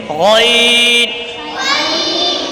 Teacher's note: غین اور خا حلق کے اوپر والے حصے سے ادا ہوتے ہیں۔